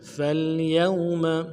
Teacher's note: کے ساتھ ملانا ہے، یا کو واو کے ساتھ ملانا ہے، واو لین ہے بغیر کھینچے پڑھیں گے، میم کو نرم سے ادا کریں گے